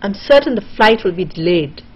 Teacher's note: Will be is again sort of put together. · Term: compression